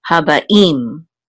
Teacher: It's a tipcha, and so we know that the accent of this word is on the last syllable.